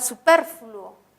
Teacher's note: superfluo, que es grave porque tiene el acento en per